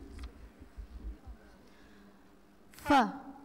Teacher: huruf yang makhrajnya ujung 2 gigi seri atas dan bagian dalam bibir bawah